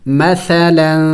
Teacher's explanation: تنوین ہے اخفا کریں گے یعنی ناک میں آواز چھپائیں گے